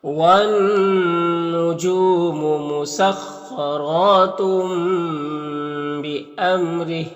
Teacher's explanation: خا حروف مستعلیہ میں سے پر پڑھیں گے، را کو اوپر کھڑا زبر ہے، را کو بھی پر پڑھیں گے اور ایک الف کے برابر کھینچیں گے۔ یہاں پر تنوین کے بعد با ہے تو تنوین کو اس چھوٹی سی میم سے بدل کر غنہ اور اخفا کے ساتھ میں پڑھیں گے، اس کو اقلاب کہتے ہیں۔